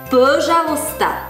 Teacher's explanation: Слог, ударение падает на первый слог.